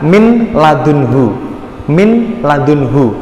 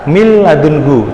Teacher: jadi dimasukkan ke lam tapi tidak dengung. Tidak mil ladunhu bukan, tapi mil ladunhu langsung masuk mil ladunhu tanpa dengung. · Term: idgham bila guna